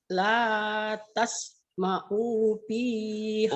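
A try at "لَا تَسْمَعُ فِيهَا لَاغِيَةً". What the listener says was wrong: U-nya pendek. Ayo hati-hati. U-nya pendek ya Bu.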